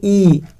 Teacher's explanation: जीहवा को मुख में जितना संभव हो सके उतना ऊंचा और तालु के समीप रखा जाता है। जैसे इ जीभ को ऊपर ले जा रहे हो इ है ना जितना हम कोशिश करते हैं कि उच्चारण अगर ऊंचा स्वर करें तो उसको को करें। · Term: संवृत स्वर